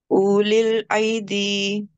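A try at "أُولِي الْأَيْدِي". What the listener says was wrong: Okay, try to keep alif short just for 1 second. And why you pronounce this alif with soft sound? Yes, it's followed by Yasakin, and the rule of lean or softness applies on it.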